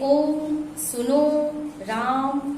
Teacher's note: प्लुत स्वरों के उच्चारण में ह्रस्व स्वरों से 3 गुना समय लगता है